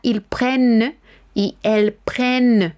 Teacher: no decimos la terminación, pero sí remarcamos la N que está multiplicada